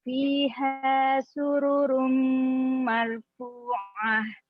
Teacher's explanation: dhammah tanwin bertemu dengan huruf mim merupakan idgham bigunah dan termasuk idgham kamil yang ditandai tasydid di atas huruf mim.